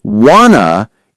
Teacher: In want to, many people say wanna in fast speech